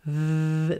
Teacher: with our teeth resting gently on the inside of the bottom lip V this sound is voiced